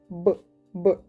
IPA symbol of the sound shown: б